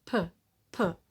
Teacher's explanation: According to the place of articulation, it's bilabial because the two lips are in contact to produce this sound. And according to the manner of articulation, p is a plosive consonant because the air is prevented from escaping from the lungs because there is a complete or partial obstruction at some point in the mouth. · The symbol p, voicing, it's voiceless without vibration of the vocal folds. According to the place of articulation, it's bilabial because the two lips are in contact to produce this sound.